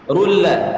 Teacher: ru itu memonyongkan mulut karena dhammah. Rulla. Rul monyong, ketambahan lam setelahnya maka monyongnya kembalikan.